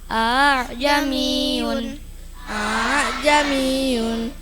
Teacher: bacaan Hamzah kedua ringan